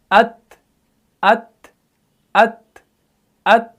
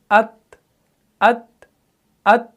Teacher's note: ता को भी आपने सख्ती से अदा नहीं करना है, बिल्कुल आपने इसको नरमी से और एयर फ्लो को पास करना है। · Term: सिफत हम्स